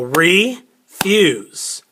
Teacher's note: so we stress the first syllable